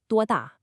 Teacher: a strong falling fourth tone meaning how old